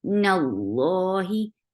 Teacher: Timmi, give kasra, give e sound. Nallahi, keep noon light. But lafz jalala heavy. And lafz jalala will be heavy here because there is fatha here before Allah subhanahu wa ta'ala's name, and by default it's long.